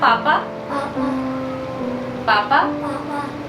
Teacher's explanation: तो अभी सारी साउंड इसकी नाक से आ रही है, तभी जो मैंने मुंह से बोल रहा तो उसकी साउंड इतनी क्लियर नहीं थी।